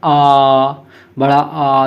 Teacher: जिसमें मुख पूरा खुलता है उसे बड़ा आ, जिसे विव्रत स्वर कहते हैं